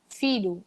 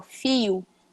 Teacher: Ou então, se for a palavra filho, ó, filho, o LH, o som do LH fica o som de I